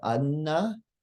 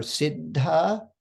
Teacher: um [Music] so a double consonant what does this sound like these are pronounced with a pause it is as if we prepare to say the first consonant and then we pause briefly before actually saying the second